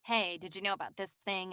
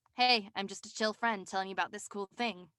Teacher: a little millennial vocal fry as i call it and it's more like chill and laid back